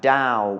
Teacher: Dow and Yao are both mid tone because they have no tone mark with them